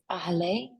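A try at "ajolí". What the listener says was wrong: Yeah, so this one's a tricky one because that second vowel actually turns a different sound. So it's ajole. So ahole. Which it kind of seems like I've heard it that way. Ojole, ojole, but this would be ajole.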